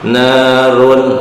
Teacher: Nah ini rohnya juga karena harokatnya harokat domah tain karena itu tafhim ya, tebal. Narun ya, idhar.